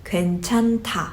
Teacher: from that h sound combined with 디귿, d sound, you get the sound of t in order for you to make it sound more naturally so that it flows.